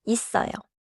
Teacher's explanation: 어요 begins with a vowel, so 쌍시옷 links forward and sounds like 있어요.